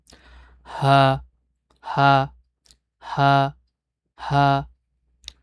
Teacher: কণ্ঠনালী থেকে, কণ্ঠনালীর গোড়া থেকে একদম স্পষ্টভাবে গম্ভীরভাবে একটু গভীরভাবে যেন উচ্চারণটা আসে